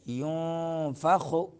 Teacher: يُنفَخُ میں نون ساکن ہے، اس کے بعد حروف اخفا میں سے فا آ رہا ہے، تو اخفا کریں گے